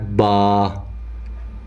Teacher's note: اور یہ دونوں ہونٹوں کی اندرونی جو تری ہے اس کے ملنے سے، جو دونوں ہونٹوں کا اندر والا حصہ ہے اس کے ملنے سے با ادا ہوتا ہے